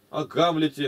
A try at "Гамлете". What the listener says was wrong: Извращаешь это ударение-то. А Пушкин иногда выращивал такие ударения. И мы должны считать, как он имел в виду.